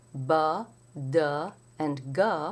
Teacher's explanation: unvoiced and their counterparts B Du and G which are voiced the voiced consonants have vocal cords that vibrate during the articulation you hear a little buzz or a little uh vibration sound